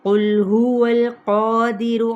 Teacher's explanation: قاف موٹا پڑھا جائے گا، حروف مستعلیہ میں سے، حروف قلقلہ میں سے بھی ہے۔ لام کو ہلائیں گے نہیں۔